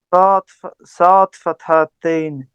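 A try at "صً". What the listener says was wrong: Son, son, sad fathatain son. We have to make the sound heavy.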